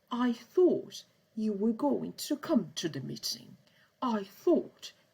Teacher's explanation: if the person that is saying that is very posh, they will probably pronounce all the T's